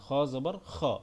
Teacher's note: এটা অনেকে আমরা খা বলি, এটা খা হবে না, এটা খ